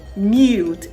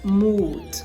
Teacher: the ya sound before the long u sound